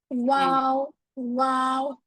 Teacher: वाओ होठों को गोल करने से लेकिन इतना गोल करेंगे कि पेंसिल की जगह बचे